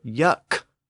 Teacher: So yuck with a K, the sound is stopped. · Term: stops